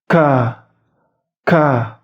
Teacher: sifat K ini yaitu hams atau sedikit dihembuskan